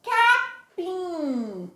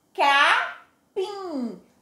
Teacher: O sonzinho sai pela boquinha e também pelo nariz. Nós chamamos esse sonzinho de sonzinho nasal, porque é um som que também sai pelo, tanto sai pela boquinha como o sonzinho sai pelo nariz, certo? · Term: som nasal